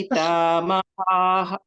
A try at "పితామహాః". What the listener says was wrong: ఇది హ కాదు దీర్ఘం కాదు మహః మహః